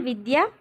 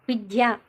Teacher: First విద్యలో మనం అల్ప ప్రాణం ఉపయోగిస్తే తర్వాత విద్యలో మనం మహాప్రాణం అనేది ఉపయోగించాం, కాబట్టి అల్ప ప్రాణాలకు మహాప్రాణాలను పలకడం.